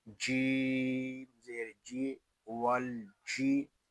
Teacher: یہاں الف جو ہے یہ زائد ہے، واو کو لام کے ساتھ ملا دیں گے، لام ساکن ہے، اس کو سکون کے ساتھ ادا کریں گے، اس کو ول اس طرح نہیں پڑھیں گے۔